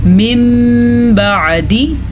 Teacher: नून साकिन के बाद हर्फ बा आ गया है तो नून साकिन मीम में बदल जाएगा, इसे इक़लाब का कायदा कहते हैं।